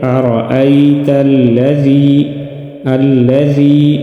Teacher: زی یا مدہ ایک الف کے برابر کھینچ کر پڑھیں گے